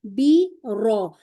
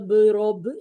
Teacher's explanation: र हमें नजर आई उसके ऊपर फतह है तो अब इसे मुफकम करेंगे